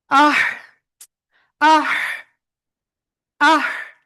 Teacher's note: গলাটা চাপ দিলে হালকা কি বাতাস বের হবে, যেটা অনেকটা চিকুন মতো।